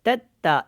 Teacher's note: اس کو لمبا نہیں کریں گے، دونوں تا باریک ہیں